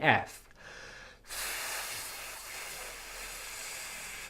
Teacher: your teeth should be touching your lip and airflow is coming out in a turbulent fashion